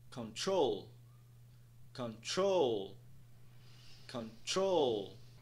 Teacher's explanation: um apóstrofe logo após a segunda sílaba o que indica que a segunda sílaba será mais alongada e pronunciada em um tom mais alto